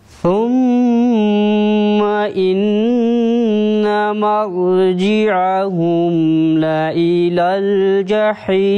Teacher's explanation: thumma, the first word, also producing the nasal sound about 2 seconds, and then noon mushaddad also producing nasal sound.